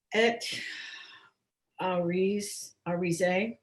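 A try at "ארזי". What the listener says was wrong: Okay, so it's not Ari, it's R. Zay.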